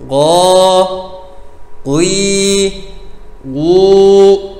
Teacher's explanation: Ga diye okunursa yanlış okunmuş olur. Dilin biraz daha gerisinden, ağzın arka bölgesinden çıkar. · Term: Gaf harfi